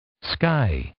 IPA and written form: skʌɪ (sky)